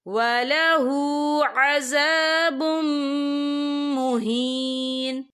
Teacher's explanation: या देखिए वलहु अज़ाबुम, बा के ऊपर तनवीन है, तनवीन के बाद जो है मीम आ रहा है, और मीम जो है रूफ़े और मलून में से है, तो यहाँ पर इदगाम होगा। तो हम इसे गुन्ने के साथ पढ़ेंगे।